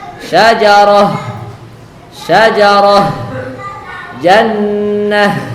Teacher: apabila tanwinnya berada di atas ta marbutah maka dia kita baca dengan H yang sukun